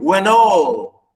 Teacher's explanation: When all, the stress on the second syllable